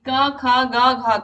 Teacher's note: क ख ग घ का कंठ होता है